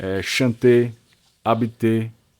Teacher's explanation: você não fala o R, você fala E